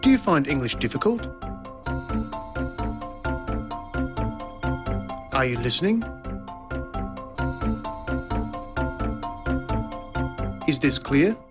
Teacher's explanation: the high or rising tone used for asking a yes-no question